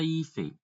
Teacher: A palavra hífen tem onde a tonicidade? No I, não é hífen. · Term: paroxítona